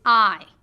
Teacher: your lips Glide from the open position to a slightly parted position I your jaw Rises with the tongue and closes your tongue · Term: dip thong